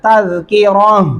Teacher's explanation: یہاں پہ وقف کرتے ہیں تو پھر آپ نے کیا کرنا ہوگا؟ تا کو ہا میں بدلنا ہے